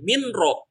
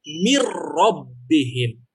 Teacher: Nah, ini ingat kaidah yang tadi saya jelaskan. Kalau bertemunya dengan lam dan ro, maka dibacanya bukan min ro, ya, tetapi mirrobbihim. Jadi melebur ke ro-nya.